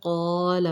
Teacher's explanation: قاف مستعلیہ موٹا پڑھیے گا، کالا نہیں قالا پڑھنا ہے